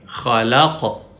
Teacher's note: قاف پہ کلکلا یا ایکو ساؤنڈ پروڈیوس کریں گے